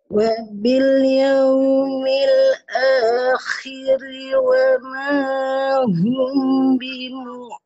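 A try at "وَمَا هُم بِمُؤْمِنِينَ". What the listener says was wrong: Bimunya jangan ke ain ya. Wa mahum bimu. Jangan bimu, jangan ditekan. Wa mahum bimu. Biasa aja bimu minin.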